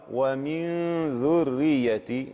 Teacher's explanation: يتم بإخراج الغنة من الخيشوم ولا عمل للسان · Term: الإخفاء